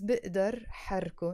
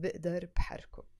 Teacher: So when it's followed by a verb, بقدر, we don't say بقدر بحركو, we drop the B, the ba, the B sound, and it becomes بقدر حركو instead of بقدر بحركو